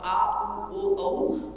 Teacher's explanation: जिनमें जिह्वा का पीछे का भाग ऊपर उठता है वो पश्च स्वर कहलाते हैं। ई, ए, ऐ अग्र स्वर है, अ मध्य स्वर है और आ, उ, ओ, औ पश्च स्वर हैं।